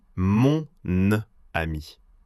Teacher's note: Sie klaut das männliche Pronomen mon nur, um den N-Laut als Brücke zu benutzen.